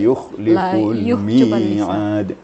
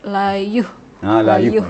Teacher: Jadi harus ada penekanan. Kalau tidak ditekan yukhlifu, maka seakan-akan kha itu jadi ha dia. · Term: makhraj kha-nya